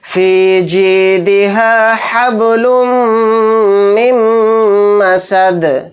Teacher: پھر دال کو یہاں پر ساکن کر کے پڑھیں گے کیونکہ حالت وقف میں دال پر جزم آئے گا، یعنی ساکن کر کے پڑھیں گے اور اس میں قلقلہ بھی ہوگا